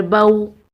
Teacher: वाव लीन को बग़ैर खींचे बग़ैर झटका दिए पढ़ते हैं